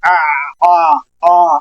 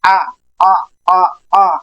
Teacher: یہ پیچھے سے زبان حلق کے درمیان والے حصے پہ اٹیچ کرنی ہے، ہلکی سی ایک جھٹکے سے اس کو ادا کرنا ہے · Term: آئین